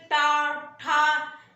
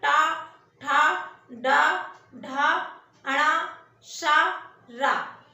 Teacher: मूर्धन्य ध्वनियों का मतलब है, आप बोल के देखिए, टा, ठा, इसमें जीभ जो है हमारी पलटती है, जीभ पीछे की ओर जाती है।